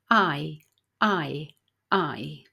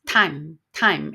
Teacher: you say the sound a as in cat and then you Glide really smoothly to the sound I in bits so you raise your tongue up so it's going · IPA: /aɪ/